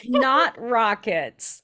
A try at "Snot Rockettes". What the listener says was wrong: the Snot Rockettes. There's ETTES at the end.